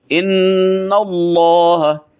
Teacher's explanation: इन्न वही इदगाम है, नून मुशद्दद है, इन्नल्लाह, इन्नल्लाह, अल्लाह की लाम को पुर करेंगे।